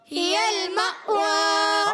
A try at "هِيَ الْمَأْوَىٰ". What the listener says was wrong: ہا کے نیچے زیر ہے، ہا کو کھینچنا نہیں، یا کو لام سے ملانا ہے، اور ہا کا مخرج حلق کے نیچے والا حصہ، یا کا مخرج ہے وسط زبان وسط تالو، زبان کا درمیان اوپر تالو کا درمیان. جیم، شین، یا، 3 حروف.